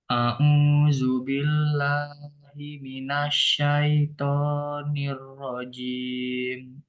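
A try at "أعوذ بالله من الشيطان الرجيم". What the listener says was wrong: eh dalal ya dalal bukan Zu tapi du du enggak ada zya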